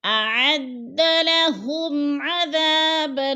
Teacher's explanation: ہم نے غنہ نہیں کرنا، لفظ کو صاف صاف ظاہر کر کے پڑھنا ہے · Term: اظہار شفوی